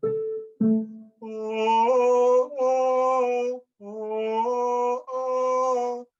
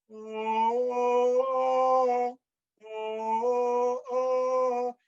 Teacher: a glottal stop is you making sure that you have a clear articulation between the vowels